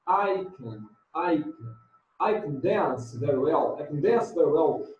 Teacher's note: Você quase não escuta o can.